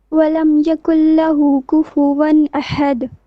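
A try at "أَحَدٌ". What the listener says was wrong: On the last word, ahad, not ahad. Don't stretch it. Ahad.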